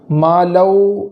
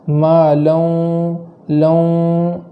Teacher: یہاں ادغام کریں گے اور اس کو گنہ کے ساتھ کریں گے، ایک الف کے برابر یہاں گنہ کریں گے۔ مالو ایسا نہیں پڑھیں گے بلکہ گنہ کے ساتھ مالو، لوں ایسا ناک میں آواز جائے، اس طریقے سے پڑھیں گے۔